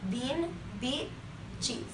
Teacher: Raise your tongue very high and push it to the front of your mouth. The E is a tense end sound, so your lips and tongue should be tense.